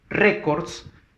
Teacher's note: Tic-tacs no lleva tilde. En cambio, records, fuerza de voz en la re